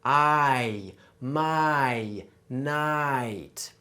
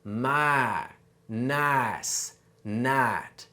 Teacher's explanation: for a southern accent, we cut off that second sound